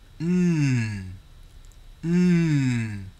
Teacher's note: they're nasal sounds because when you make the M sound and the n Sound we are actually making the sound come out through our nose